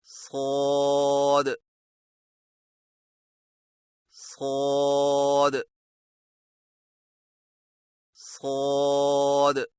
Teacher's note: تینوں کی ادائیگی کے وقت زبان کی نوک کو سامنے والے نیچے کے 2 دانتوں کے کناروں سے مضبوطی سے لگائیں، مگر ز اور سین کی ادائیگی میں زبان کی جڑ کو نیچے رکھ کر باریک آواز میں پڑھیں، اور صاد کی ادائیگی میں زبان کی جڑ کو اٹھا کر موٹی آواز میں پڑھیں